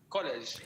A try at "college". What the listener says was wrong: I want you to make the O sound a little bit bigger. College. Yeah, it looks like college, but it's actually college. College.